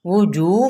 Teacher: ہونٹ گول کریں، وجو مد اصلی بالواو کے ساتھ